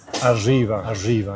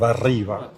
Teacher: It can be a retroflex, aʐiba instead of arriba. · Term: erre asibilada